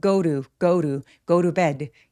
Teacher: go to bed라고 to에 t를 굴려서 발음할 수 있어요. 왜? 모음 사이에 끼어 있어서. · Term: 굴러간 소리